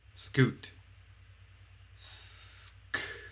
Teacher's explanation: These consonant sounds are aperiodic waves, so they are noise. S is a sibilant sound, a sustained noise, whereas the K and T are called plosives. · the K and T are, of course, short sounds with a burst of air at the beginning